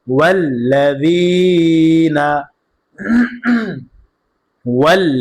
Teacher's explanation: জেরের পরে ইয়া সাকিন মাদে হরফ এক আলিফ টান হবে, মাদ্দে তবাই।